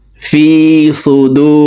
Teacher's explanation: দেখুন পেশের বাম পাশে জজমালা ওয়াও মদার হরফ, ডান দিকের হরকতকে একালিপ টানিয়া পড়িতে হয়, তো ঠোঁট গোল করে একালিপ টানি পড়ব